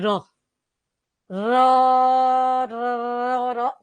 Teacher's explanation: પ્રકંપી કેમ કે આને કંટીન્યુસલી તમે બોલી શકો